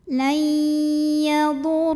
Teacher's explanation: Lam pada lafaz Allah atau lam jalalah dibunyikan secara tafkhim karena huruf sebelumnya ro berbaris dhammah. Maka cara bacanya ditebalkan, pangkal lidah dinaikkan.